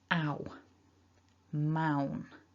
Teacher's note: in english we've got this double vowel so the vowel in this syllable is ow moun is what we've got mount ow so those two there · there are technically two vowel sounds happening but they happen together as a double vowel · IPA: /aʊ/